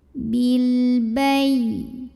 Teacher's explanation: Karena alif lam ketemu sama huruf qamariyah yaitu ba. Maka cara bacanya lam ini dibunyikan dengan idhar atau jelas ya bunyi L-nya. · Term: alif lam qamariyah